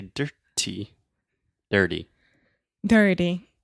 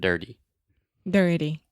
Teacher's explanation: one more example of where we often see the flap T in English is when you have an R before the T